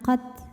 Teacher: Hams artinya keluar angin. Untuk ta yang sukun maka anginnya keluarnya terakhir setelah keluar suaranya. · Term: sifat hams